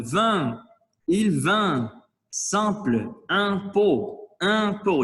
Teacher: Il faut faire le « et » ouvert, mais le son, il faut le faire sortir par le nez.